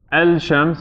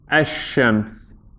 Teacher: The lam has gotten absorbed into the sheen. So instead of saying el-shams, we have ash-shams.